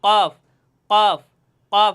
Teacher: জিব্বার গোড়া তার বরাবর উপরের তালুর সঙ্গে লাগাইয়া কফ কফ হরফ উচ্চারণ হয়। দেখেন আমি কীভাবে উচ্চারণ করি আপনারা খেয়াল করবেন, জিব্বার গোড়া তার বরাবর উপরের তালুর সঙ্গে লাগাইয়া কফ, কি উচ্চারণ হয়, কফ কফ কফ।